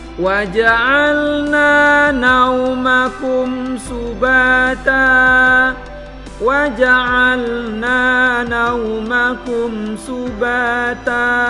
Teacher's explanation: Na-nya itu harus dibaca panjang. Wa ja'alna, na dibaca panjang satu alif atau 2 harakat. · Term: huruf nun fathah